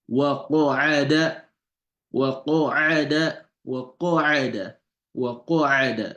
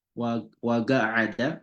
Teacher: it's pronounced with a round mouth and a raised tongue at the back. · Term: qa